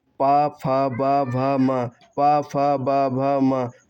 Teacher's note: जिन वर्णों का उच्चारण होठों से होता है उन्हें हम ओष्ीय व्यंजन कहते हैं।